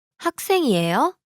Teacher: here the question is formed by the rising intonation